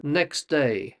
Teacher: The T in the middle can often disappear when native English speakers are talking. So it's almost like we delete the T when we're saying next day, you see? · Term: disappearing sounds